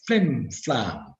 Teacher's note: maybe a little bit more stress on the first part but most but both parts seem to be stressed and the